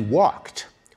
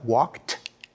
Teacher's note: Very few of us realize, for example, in English, that the past tense suffix ed is actually pronounced in three different ways. When we say he walked, we pronounce the ed like a t